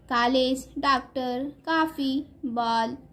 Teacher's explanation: ये आ और ओ के बीच की ध्वनि है।